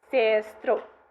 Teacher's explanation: when you have a word like sister in accusative case, so sistro, in this dialect it sounds like sestro, whereas the nominative sister just sounds as sistra.